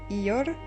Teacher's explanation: Le R roulé, difficile à maîtriser, la langue est roulée, son extrémité vibre